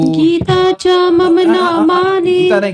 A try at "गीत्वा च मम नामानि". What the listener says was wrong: गीता नहीं, गीत्वा है, गीत्वा।